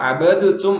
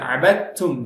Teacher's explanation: அந்த இடத்துல அபதுத்தும் அப்படின்னு சொன்னா தப்பாயிடும். அபதுத்தும் இல்ல அபத்தும், தால கம்ப்ளீட்டா விட்டுரும்